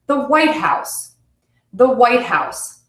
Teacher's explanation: my first word is going to be stressed and my second word will be unstressed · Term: compound nouns